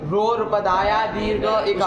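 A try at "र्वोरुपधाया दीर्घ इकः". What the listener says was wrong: उसको सूत्र को साफ बोलो। दीर्घ इकः, ध्यान से बोलना है ना, उसमें वो रूपदाया मत बोल देना। र और व का द्वंद्व करके वो हो बनाया है ना।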